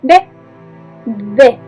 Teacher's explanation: Para nuestro oído, D y B suenan exactamente igual. Son un fonema bilabial sonoro, repito, porque cuando lo pronunciamos vibran nuestras cuerdas vocales.